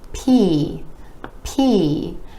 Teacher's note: the P is another of those air puff sounds, meaning it's made with a tiny puff of air being released.